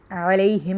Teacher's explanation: علیہم میں عین کو حلق سے نکالیں گے اور لام زبر یا لئی میں حرف لین ہو رہا ہے۔